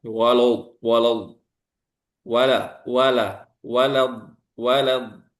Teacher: wala jangan sampai lanya juga ditebalkan